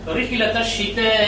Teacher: এই মদের হরফ মূলত মধ্যে আসলি 1 আলিফ পরিমাণ টেনে পড়তে হতো, কিন্তু যেহেতু এর পরের অক্ষর উল্টা 2 এর মতো হামজা এসেছে এই জন্য এই তাটাকে টানতে হবে 4 আলিফ পরিমাণ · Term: মদ্দে মুত্তাসিল